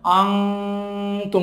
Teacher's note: নুন সাকিনের পরে তা আসছে, তা হলো ইখফার হরফ, নুনটা নাকের বাসিতে চলে যাবে।